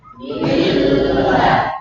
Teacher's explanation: Dengungnya sudah enggak ada, berarti hilang ya, nunnya hilang.